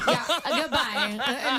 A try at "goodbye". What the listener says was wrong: It's not like goodbye. It's that whole, that little snark there, Goodbye, a-hole. That's the tone.